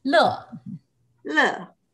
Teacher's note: And the tone, I put the fourth. So it's like a down sound.